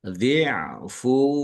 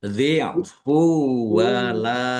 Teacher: Dhammah tanwin bertemu dengan huruf wawu, idgham bi gunnah, masuk dengan mendengung, langsung masuk ke huruf wawu dan dibaca mendengung. Mendengung wawu ditahan biar tampak mendengungnya. Dhi'fuwa, jadi ditahan dulu ya.